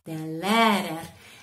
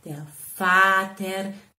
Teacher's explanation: Le R finale muore un pochino, quindi dobbiamo lasciarlo un po' andare.